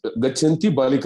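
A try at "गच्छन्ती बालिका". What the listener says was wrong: గచ్చంతి బాలిక దీర్ఘం ఉందండి అక్కడ, గుర్తుపెట్టుకోండి. గచ్చంతి అంటే క్రియాపదం అయిపోయింది, గచ్చంతి అంటే శత్రు ప్రత్యాంతం. ఒక మాత్ర డిఫరెన్స్ లో ద మీనింగ్ విల్ చేంజ్.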